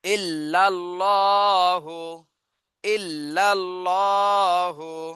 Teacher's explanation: আল্লাহ শব্দটা জবর এজন্য মোটা করে পড়তে হবে